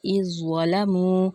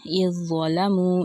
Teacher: ذال کی جو صفت ہے پہلے والے ورڈ کی وہ بیچ میں غائب ہو گئی، ٹھیک ہے، سافٹلی نہیں پروناؤنس ہوا، ایک دم سے ہارڈلی اذ ظلموا اس طرح سے پروناؤنس ہوا، ٹھیک ہے۔